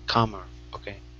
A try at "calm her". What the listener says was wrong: Yeah, but you need the L there. If not, then it's calmer. Instead of it wouldn't be calmer, it's calmer. Calmer. Yeah, just add in that L and you're good.